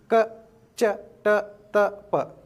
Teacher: ಸಾಲಿನಲ್ಲಿ ಇರತಕ್ಕಂತದ್ದು ಮತ್ತು ಮೂರನೇ ಸಾಲಿನಲ್ಲಿ ಇರತಕ್ಕಂತ ಅಕ್ಷರಗಳನ್ನ ಏನಂತ ಕರೀತೀವಿ ಅಲ್ಪ ಪ್ರಾಣಾಕ್ಷರಗಳು ಕಡಿಮೆ ಉಸಿರಿನ ಸಹಾಯದಿಂದ ಈ ಅಕ್ಷರಗಳನ್ನ ಉಚ್ಚಾರ ಮಾಡ್ತೀವಿ ಇವುಗಳನ್ನ ಹೆಚ್ಚಿನ ಉಸಿರಿನಿಂದ ಎಳೆಯಂಗಿಲ್ಲ ಕಡಿಮೆ ಉಸಿರಿನೊಳಗ ಕಡಿಮೆ ಚಿಟಿಗಿ ಹೊಡೆಯೋದರೊಳಗ ಏನ್ ಮಾಡ್ತೀವಿ